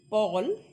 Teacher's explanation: And in case of Paul, so then there is puff in your front part of mouth.